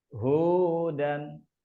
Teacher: pengucapannya adalah 2 harokat ya, 2 harokat, dan untuk pengucapannya caranya adalah dengan sekali ayunan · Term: mad tabi'i